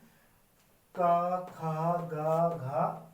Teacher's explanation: जो आवाज आ रही है व सीधा गले से आ रही है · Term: कंठ